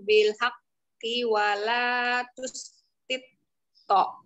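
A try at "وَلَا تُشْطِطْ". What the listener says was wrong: Jangan telat. Wala tustito. Tustito, jangan tustito, itu telat. Telat ngangkat ntar.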